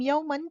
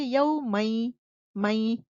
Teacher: جب آپ نون ساکنہ کو یا میں مرج کر رہے ہو تو آپ غنے کے ساتھ مرج کرو گے · ہم نون کے مخرج کو یا میں ملا دیتے ہیں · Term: ادغام بی غنہ